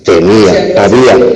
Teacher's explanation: Una sílaba tónica, la I, y una átona, la A. · tenemos una vocal pleno, anterior, tensa, tónica, la I, que está junto a otra vocal, abierta, central, que es la A. Pero ahí están sílabas diferentes.